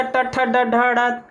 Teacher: इसके बाद मूर्धा से कौन सा, ट, ठ, ड, ढ, ढ, मूर्धा से निकलता है